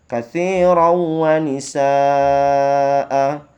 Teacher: nisanya dipanjangkan 2 harokat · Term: mad iwad